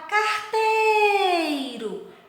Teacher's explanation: Então, a sílaba mais forte aqui, o tei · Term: sílaba tônica